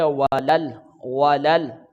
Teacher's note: واؤ پھر حرکات میں سے ہے تو جلدی ادا کریں گے، لام کو لام کے ساتھ ملا کر ادا کریں گے